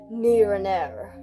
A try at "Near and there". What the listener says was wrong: An air? It's ear, not air. Near and there.